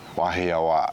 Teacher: there's a slight, you know, hold on that last a · The one thing you don't want to do is hold out the a too long.